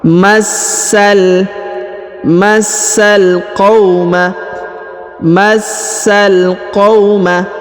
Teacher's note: Huruf sa ditahan dan ditekan, lalu disambung masuk ke huruf lam berharokat sukun.